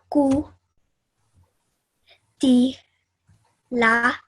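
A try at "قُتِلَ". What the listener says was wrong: Good. Qutila.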